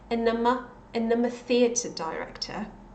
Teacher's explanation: she also doesn't pronounce the D in and.